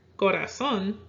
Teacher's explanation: does not follow the natural stress rule and it's stressed on the final syllable, so it will have a written accent.